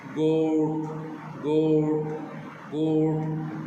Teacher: now see the word गोट with your finger touching your lips and check that your lips become rounded at the end of the word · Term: राउंडिंग योर लिप्स